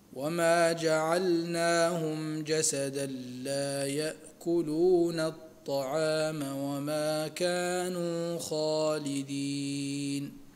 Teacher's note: ونون التنوين في جسدا تدغم إدغاما تاما في اللام بغير غنة